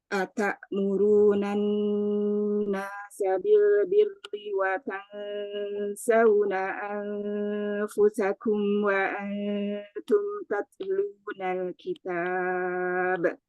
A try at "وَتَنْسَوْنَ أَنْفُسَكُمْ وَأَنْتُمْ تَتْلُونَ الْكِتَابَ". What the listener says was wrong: Tadi di anfusakum sifat tawasud dan gunah kurang. وتنسون أنفسكم وأنتم